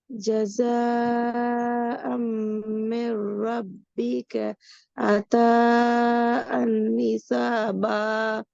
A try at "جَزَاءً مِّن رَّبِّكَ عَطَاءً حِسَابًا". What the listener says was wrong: சரி, இப்ப இதை நீங்க ஒரு பிழை விட்டீங்க. நிப்பாட்டுற ஒழுங்கு பிழை. நீ நிப்பாட்டுற ஒழுங்கு படிச்சுட்டு ரப்பிக்கேன்னு நிப்பாட்டையிலுமா? மூச்சு முட்டுனா நிப்பாட்டணும். நான் உங்களுடைய ஸ்பீடை குறைக்க சொல்லிக்கிறேனே, ஸ்பீடை குறைச்சிக்கிறதால எப்படி மூச்சு முட்டும், அப்ப நான் நிப்பாட்டணும்.